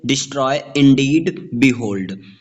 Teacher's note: देखिए, फूट के different types होते हैं। आयम्ब जो कि अनस्ट्रेस्ड सिलेबल और स्ट्रेस्ड सिलेबल से बना होता है।